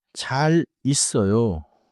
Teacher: 잘 있어요 becomes 자 리써요 in smooth speech.